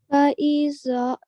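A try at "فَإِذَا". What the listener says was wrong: Dhal sound is different to za. Okay, so in this case, it's exactly the same as a tha, but the sound is tha.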